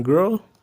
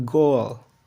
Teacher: the monophthong in girl with the diphthong in goal. The vowels of cow and goal both begin at a given place and glide towards another one.